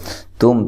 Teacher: تا کو باریک، میم ساکن کا اظہار ہے